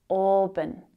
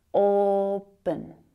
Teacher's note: it has two syllables. Auburn. And the first one is the stressed one. The second one reduces to the schwa.